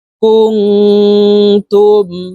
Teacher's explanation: পরে ইকফার হরফ তা আসছে ইকফার হরফ তা আসছে এই কারণে এই নুন সাকিনকে নাকের ভিতরে লুকাইয়া গুন্নার সহিত পড়তে হবে